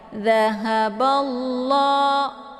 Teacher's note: Kemudian balla di sini ada lafdzul jalalah, namanya lafdzul jalalah tafkhimun mufakkamun. Jadi dibaca tebal ya, karena sebelum lafdzul jalalah ini berharakat fathah ya.